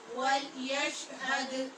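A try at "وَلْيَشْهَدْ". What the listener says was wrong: یش نہیں بولیں، ولیشہد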